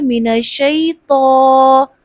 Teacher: تا کو موٹا کر کے پڑھنا ہے، باریک نہیں پڑھنا، اگر باریک پڑھیں گی تو تا بن جائے گی، یعنی توئیں سے وہ تا بن جائے گی، تو کیا پڑھنا ہے؟